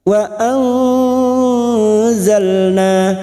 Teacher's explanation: nun sukun kita samarkan dan mendengung selama dua atau tiga harakat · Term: ikhfa Hakiki